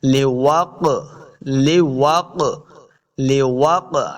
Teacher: قاف حروف مستعلیہ سے موٹا بھی کریں گے اور قاف حروف قلقلہ سے بھی ہے، تو ہم نے اس کو خوب واضح کرنا ہے۔ حروف قلقلہ 5 ہیں، قاف، طا، با، جیم، دال، تو ان میں سے قاف آ گیا ساکن ہے، تو ہم نے اس کو خوب واضح کرنا ہے۔ · ہا کو اپنے حلق کے نچلے والے حصے سے ادا کریں گے، آگے الف ہے، اس کو 2 حرکات لمبا کرنا ہے۔